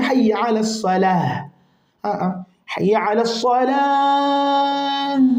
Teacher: ivute vizuri hiyo lamu, ivute hiyo lamu ya swala kwa sababu unasimama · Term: al-madd al-arid lis-sukun